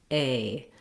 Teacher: In American English, that's a diphthong, meaning you glide from that tense A and then you close and relax a little to your I sound. A. Just hold it nice and long and you should be able to make that sound correctly.